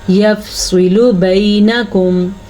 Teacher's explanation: سواد کو پر پڑھنا ہے کیونکہ سواد حروف مستعلیہ میں سے ہے